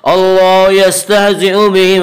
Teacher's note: اللہ کا لام پر ہوگا۔ اس کا قاعدہ یہ ہے کہ اگر اللہ کے لام سے پہلے زبر اور پیش آئے تو اللہ کے لام کو پر پڑھیں گے، اور اللہ کے لام سے پہلے زیر آئے تو اللہ کے لام باریک ہوگا۔